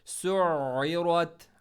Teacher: आइन को middle throat और स्ट्रेस के साथ पढ़ना है